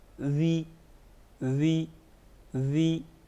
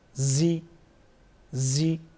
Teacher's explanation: ذال میں ہم نے نرمی کی، زا میں ہم سختی کرتے ہیں